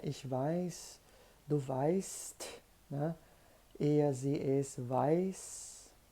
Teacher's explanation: nas três primeiras pessoas do singular, nós temos um ditongo, isso caracteriza na pronúncia uma vogal longa